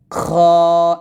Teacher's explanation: এখানে খ এর মাখরাজটা হবে যে মানে হলকের শেষ থেকে হল মানে হলকের শেষ থেকে আমরা এই খ টা উচ্চারণ করব